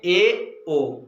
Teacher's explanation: अर्ध समृद्ध का मतलब होता है हाफ क्लोज, यानी कि हम कह सकते हैं आज जिसमें मुख द्वार लगभग आधा खुला रहे, आधा बंद रहे